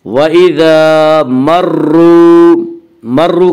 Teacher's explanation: اس کا قاعدہ ہے کہ را مشدد متحرک کے اوپر زبر اور پیش آئے تو را مشدد متحرک کو پر پڑھیں گے، زیر آئے تو را مشدد متحرک کو باریک پڑھیں گے۔ یہاں را مشدد کے اوپر پیش ہے اس لیے را مشدد کو پر پڑھیں گے